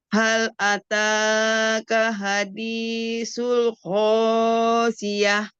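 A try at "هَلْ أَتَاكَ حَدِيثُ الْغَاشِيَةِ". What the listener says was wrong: Panjangan. Hal ataka hadithul ghasyiyah. Itu kepanjangan deh. Madnya kepanjangan setengah huruf kan. Jangan hal ataka hadis itu kepanjangan. Hal ataka hadithul ghasyiyah.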